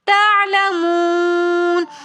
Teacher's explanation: تعلمون کے اندر واو مدہ ہونے کی وجہ سے ہم یہاں پر ایک الف کی مقدار کھینچ کر پڑھیں گے. پھر واو مدہ کے بعد آگے نون ساکن آ رہا ہے تو سکون کی حالت میں ہم اس کو زیادہ کھینچ کر پڑھیں گے